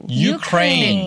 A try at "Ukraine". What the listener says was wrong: 네, 우가 아니라요. 우유 할 때 유 생각하시면 돼요. 너, 유. 그래서 Ukraine. Ukraine이라고 해주시면 돼요. 좀 더 한국적인 발음으로 발음하기 쉽게 우크라이나 하지만 우크라이나 하면 아마 유크레인이라고 못 알아들을 것 같아요.